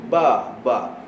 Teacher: makhraj huruf ba bibir dengan bibir ba ba tak bertemu bibir tak keluar huruf mim tak bertemu